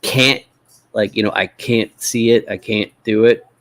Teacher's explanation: sometimes our T's in the middles, they just turn into what linguists call a glottal stop.